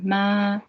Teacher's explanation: The first tone, the horizontal one, this one, ma, it's a high level one.